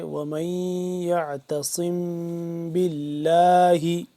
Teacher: میم ساکن کے بعد با آ جائے تو یہاں پہ اخفا کرتے ہیں